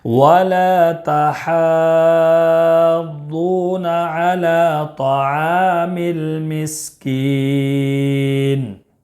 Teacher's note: عین میں بھی الف مدہ ہے، 1 الف کے برابر کھینچ کر پڑھیں گے۔ کاف میں مد عارض وقفی ہوگا، اس میں طول توسط قصر تینوں جائز ہیں